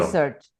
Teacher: You emphasize the first syllable.